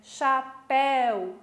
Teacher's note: ditongo fechado Quando eu digo herói a boca fica aberta Chapéu a boca fica aberta no céu né Isso é um ditongo aberto